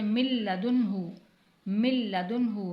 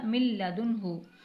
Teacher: قاعدہ لگائیں گے، لام پہ ادغام کا کیا قاعدہ لگے گا، یعنی ادغام بلا غنہ ہوگا، یہاں پر غنہ نہیں کیا جائے گا